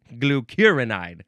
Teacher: The emphasis is in the second syllable.